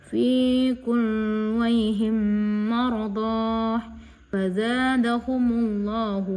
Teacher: memasukkan huruf mim ke dalam huruf mim disertai dengan suara ghunna sekitar dua harakat. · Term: idgham mimi, idgham mutamasilain